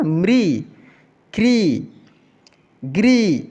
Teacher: जिसमें री का मात्रा लगा है ना, उसका उच्चारण थोड़ा तेजी में करते हैं।